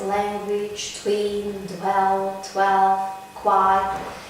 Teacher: Consonants, especially t, d, k, g, and s, followed by the sonorant w, become lip rounded.